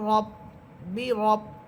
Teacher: এখানে র হরফ মোটা হবে কারণ র হরফের উপরে আছে জবর।